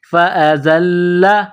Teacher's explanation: فَأَزَلَّهُمَا الشَّيْطَانُ فا کے اوپر زبر، اس کے بعد الف کے اوپر زبر ہے، اس کو حمزہ پڑھیں گے. زا میں سیٹی کی آواز پیدا کرنی ہے، زا کو لام کے ساتھ پلس کرنا ہے.